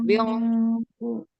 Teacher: Ikhfa yang bertemu dengan huruf qaf berarti ikhfanya dibaca tebal. Nah, jadi nanti pangkal hurufnya sudah harus terangkat pada saat ikhfa agar begitu pengucapan huruf q itu dia tinggal buka ya.